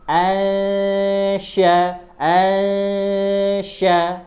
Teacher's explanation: huruf sya lidah tengah naik ke langit-langit.